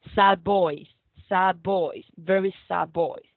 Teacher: A d sound changes to a b sound before v, and here we have a b. So it changes from a d to a b, and it merges. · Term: regressive assimilation